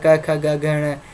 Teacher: क उच्चारण कंठ से होता है